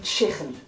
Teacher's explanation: you may hear some people from Liverpool saying chicken with a sound in the throat this is very unique to to Liverpool you don't really hear